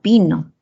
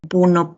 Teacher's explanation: En que uno, por el deslizamiento horizontal de la lengua, uno es anterior y el otro es posterior